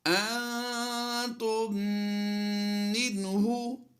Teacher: ہم ادغام شفوی کرتے ہوئے غنہ کریں گے، اور یہ میم مشدد کی وجہ سے یہاں پر غنہ آنے کی آواز آئے گی